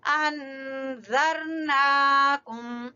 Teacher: ज़र जबान की नोक और ऊपर वाले सामने वाले दो दांतों के सिरे